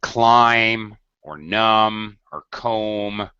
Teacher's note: the B is silent, completely silent. You don't hear it at all.